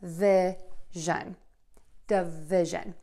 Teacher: schwa sound first for that first syllable duh and then stress vi